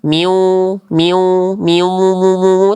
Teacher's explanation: itu ada dengung tapi kurang ditahan